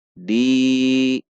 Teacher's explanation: Dal kasroh bertemu ya sukun mad tabi'i. Dua ketuk.